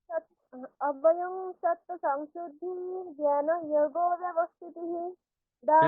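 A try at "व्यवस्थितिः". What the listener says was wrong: ব্যবস্থিতি হয়ে যাচ্ছে বিয়ব, হ্যাঁ? ব্যব নয়, বিয়ব। অভয়ম সত্ত্ব সংশুদ্ধির জ্ঞান যোগ ব্যবস্থিতিঃ দানং দমশ্চ যজ্ঞশ্চ স্বাধ্যায়স্তপ আর্জবম। এইভাবে বলতে হবে।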